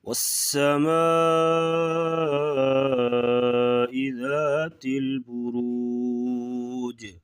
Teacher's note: یہاں پر قلقلہ ہوگا اور را کو موٹا پڑیں گے